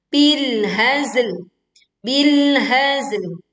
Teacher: Ya, seperti itu kita alirkan suara saat membaca zai sukun, lalu kemudian ditutup dengan huruf lam sukun dan suaranya tipis dan tidak memantul